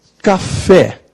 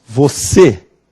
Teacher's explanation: é a mesma café é uma oxítona você é uma oxítona só que o som de café é aberto o som de você é fechado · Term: som aberto